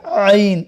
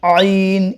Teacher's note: ये आइन जो है ये गले से निकलता है